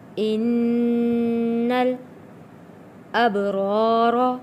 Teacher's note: نون پہ ہم نے غنہ ادا کرنا ہے کیونکہ نون تشدید والا ہے، اور با کے اوپر جزم ہے، حروف کلکلہ ہے، یہاں پہ ہم نے کلکلہ ادا کرنا ہے۔